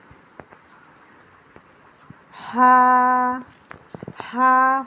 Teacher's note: हुरूफ हल्की है, इसे हलक से ही निकालने की कोशिश करें